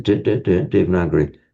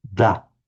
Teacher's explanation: that is a dental the tip of the tongue is behind the teeth